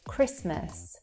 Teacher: There you cannot hear that T sound there in between the S and the M.